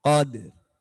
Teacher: Kalau tidak cepat, biasa akan terdengar seperti ada harokat vokalnya, ada tambahan e-nya begitu. Sebenarnya kalau lambat, bukan karena kita nambahin tapi karena bias dari pantulan kol-kolahnya. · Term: bias dari kolkolahnya